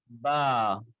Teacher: با ہونٹوں کے تر حصے سے ادا ہوتا ہے, اپنے دونوں کے تر حصے ہونٹوں کے تر حصے ملائیے اور پھر ادا کیجیے با.